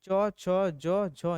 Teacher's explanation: च वर्ग का उच्चारण स्थान तालू से होता है